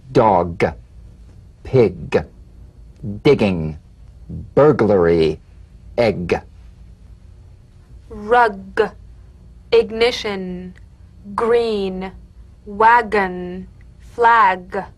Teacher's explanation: of the back of the mouth without tightening pressing or pushing you'll feel a crisp tap and a voiced pulsation of the back of the tongue · medial teeth cognate the voiced tongue back plosive consonant g place the back of the tongue in gentle contact with the